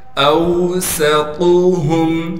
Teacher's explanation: طا کو موٹا کر کے پڑھیں گے اس لیے کہ طا حروف مستعلیہ یعنی موٹے حروف میں سے ہے · اوسطهم حمزہ کو واو سے ملا دیں گے اس لیے کہ واو ساکن ہے، سین میں سٹی ادا کر کے باریک پڑھیں گے